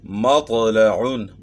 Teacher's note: تو جب تک آواز کو موٹا نہیں کریں گے، زبان کو تالو کی طرف نہیں اٹھائیں گے، تو طا کو ہم موٹا نہیں پڑھ سکتے ہیں. طا کو موٹا پڑھنے کے لیے زبان کو تالو کی طرف اٹھانا ہوگا، اس کو موٹا پڑھنا ہوگا اور اس کو پھر ہم تب صحیح پڑھ سکیں گے.